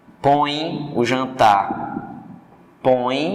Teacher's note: Com o tio é nasal, o som sai pelo nariz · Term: ditongo nasal